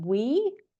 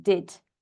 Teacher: an example of a long vowel is the E in we, and an example of a short vowel is the E or the I, sorry, in did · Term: long and short vowels